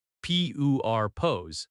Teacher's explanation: Purpose has stress on the first syllable.